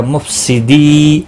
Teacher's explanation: مفسدی، یہاں پر دیکھیں یا مدہ، واو مدہ اور الف مدہ تینوں یہاں پر دیے ہوئے ہیں. نون وقف کی صورت میں ساکن ہوگا، 3 سے 5 الف کے برابر کھینچ کر وقف کریں گے. مد العارض وقفی ہوگا، وقبل اسکان ہوگا.